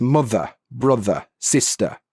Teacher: The R sound is not pronounced at the end of a word or before a consonant. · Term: nonrotic